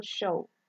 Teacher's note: We have Sh, that is voiceless, lingual palatal, fricative, example show.